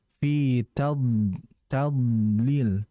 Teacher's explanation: Huruf dad ini huruf yang mengalir, tebal, dan dia juga memiliki sifat namanya adalah istitalah.